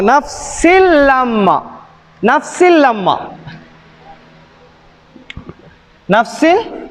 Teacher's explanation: இதகாம் பிலாகுன்னா என்றால் சேர்த்து ஒன்னா இல்லாமல் ஓத வேண்டும்.